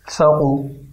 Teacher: ثا کو نرمی سے ادا کر کے قاف کو موٹا ادا کرنا ہے، ثقو۔ یہ احتیاط رہے کہ ان کی حرکات کو کھینچا نہ جائے، ثقو۔